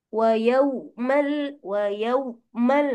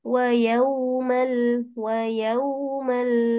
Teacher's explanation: Sebab dia tak bagi sifat rahawah pada wau. Wau boleh ditarik.